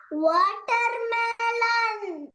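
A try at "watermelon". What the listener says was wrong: very good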